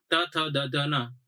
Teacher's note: ત વર્ગ બોલો તો તમારા જીભ છે દાંતે ભટકાવી જોઈએ